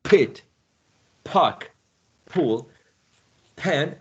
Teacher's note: in English we need to add this plosion this puff of air right and you place your hand in front of your of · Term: aspiration